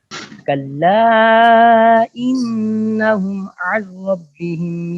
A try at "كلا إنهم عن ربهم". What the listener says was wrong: ربهم دھیان سے پھر پڑھیے را کو پر کریں، یا آپ کے اندر کمزوری ہے، آپ را کے اوپر توجہ نہیں دیتے.